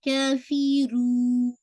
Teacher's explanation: پہلے سے نہیں، نیزل ساؤنڈ لے کر آنا ہے، کافرون نہیں، رو کو اسٹریچ کیجیے اینڈ دین جب آپ 4 کاؤنٹ تک اسٹریچ کریں گے دین آپ نے نون کا نیزل ساؤنڈ ایڈ کرنا ہے